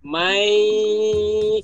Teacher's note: Nah, jadi kalau idgham memasukkan digunah dengan dengung, jadi kita masukin tuh nunnya ke iya, lalu pakai dengung sepanjang dua harokat. Jadi mai, kita tahan dulu dua harokat, baru pindah ke lafal berikutnya. Jangan langsung mai ya pulu, tapi kita tahan dua harokat.